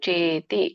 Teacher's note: ದೀರ್ಘ ಇದೆ, ಚೇ ಎಳಿಬೇಕು